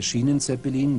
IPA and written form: ˈʃiːnənˌtsɛpəliːn (Schienenzeppelin)